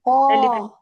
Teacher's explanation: قا نہیں جی قا کو ہیوی کریں. قا کو ہیوی کیسے کریں گے آپ؟ زبان کی جڑ ایلیویٹ ہوگی.